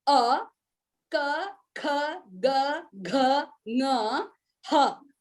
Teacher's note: All these come only from the throat. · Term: kantha